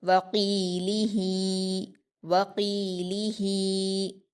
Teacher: قاف پر یا مدہ ہے، اس کو 2 حرکات کھینچ کر پڑھیں گے